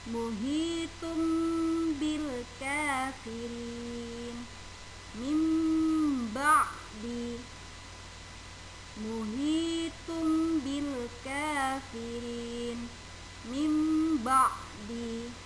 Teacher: nun mati atau nun sukun atau tanwin dibaca berubah menjadi mim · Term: iqlab